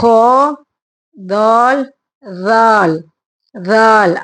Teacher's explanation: அந்த நாக்க வந்து பல்லுல வெளியில கொண்டு வாங்க டச் ஆகணும்